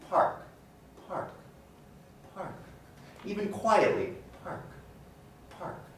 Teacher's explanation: if i pronounce park park park even quietly park park there's this burst of air but in the case of spark spark spark even loudly pronouncing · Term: aspiration